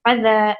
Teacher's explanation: فضا کے اوپر زال کے اوپر دیکھیں کھڑا الف ہے تو اسے ہم تھوڑا سا ہلکا سا کھینچیں گے فضا ایسے. فا کو ہم نے جلدی پڑھا کیونکہ وہاں پر صرف زبر تھا، اس لیے جلدی پڑھا جائے گا. کیونکہ حرف زال کے اوپر کھڑا زبر آ گیا ہے، یعنی چھوٹا سا الف جو ہے اسے ہم تھوڑا سا کھینچیں گے فضا اس طرح سے.